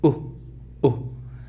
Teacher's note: Este sonido, que es como el de omega, es una U, pero es una U no muy pronunciada.